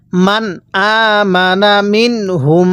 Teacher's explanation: এখানে নাকের বাঁশি দ্বারা গুনাহ করবেন